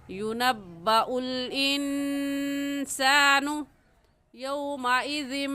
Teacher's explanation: इंसानु की नून साकिन के बाद हुरूफ़ हल्की नहीं है, इस वजह से इस नून साकिन पर हम गुन्ना करेंगे